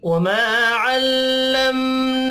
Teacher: वमा अलिफ मद्दा है, एक अलिफ के बराबर खींच कर पढ़ेंगे